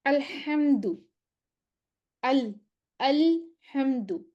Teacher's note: جب لام ساکن پڑھیں گے میم ساکن پڑھیں گے تو ہم اس پہ تھوڑا سا رکیں گے، تھوڑی آواز چلے گی